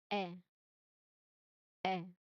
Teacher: Lips here are totally relaxed. It is not spread. It is not round. just relaxed.